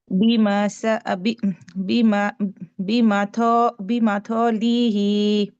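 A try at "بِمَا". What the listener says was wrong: Heavy letter না, light letter.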